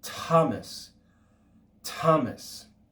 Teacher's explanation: theta or more perfectly okay like thomas thomas so is simply the aspirated sound produced when we add breath to the simple mute tau